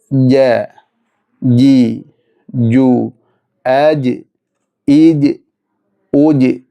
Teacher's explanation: ജീം ഉച്ചരിക്കുമ്പോൾ കാറ്റ് പുറത്തേക്ക് പോകാൻ പാടില്ല അങ്ങനെയാണ് ഈ ജീമിന്റെ ഒരു പ്രത്യേകത ശ്വാസതടസ്സം ഉണ്ടാകണം ജീം പുറത്തേക്ക് ജീമിന്റെ ജീം